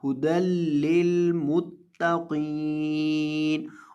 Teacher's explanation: ता को बारीक करेंगे, ता को मोटा नहीं करेंगे, और कौफ को मोटा करेंगे, कौफ को बारीक नहीं करेंगे। यानी जो हरफ मोटा है उसको मोटा रहने देंगे और जो बारीक है उसको बारीक रहने देंगे, अपनी तरफ से उसके अंदर कोई तब्दीली नहीं करेंगे।